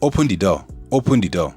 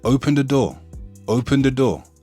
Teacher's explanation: The, from the, is both pronounced with a D. Obviously, the accents are different, but you can hear the influence on the D from the.